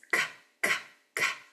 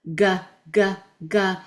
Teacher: They're the same sound, but k is a non-voice sound. G, you use your voice. So the g may be a little better because there's more contact with the, not more contact, but more feeling with that, with your voice being there.